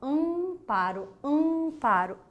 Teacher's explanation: Então, o ar, ele não é todo oral, né? Ele é parte nasalizado. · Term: nasalização